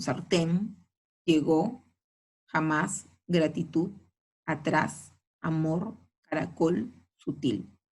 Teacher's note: Palabras agudas en ese cuadro son sartén, llegó, jamás, gratitud, atrás, amor, caracol, sutil. Todas ellas, la mayor fuerza de voz en la última sílaba